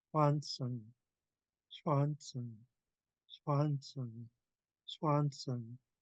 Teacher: You don't hardly notice the puff of air because we go right into that W.